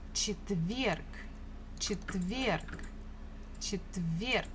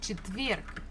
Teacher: Stress falls on this last syllable. Четверг. So the last letter is G, but we can easily pronounce it as K, just to make it a little bit easier for us for articulation.